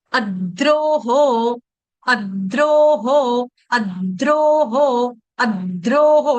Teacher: Double द का उच्चारण कर रही हूं, एक आधा द हलंत, अद, उसके बाद द्रोहो, अद्रोहो, अद्रोहो, आघात लेने का प्रयास करेंगे।